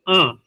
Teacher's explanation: तो अनुनासिक आदेश जब करेंगे आ को तो आ ऐसे करके मुख और नासिका से दोनों से बोला जाएगा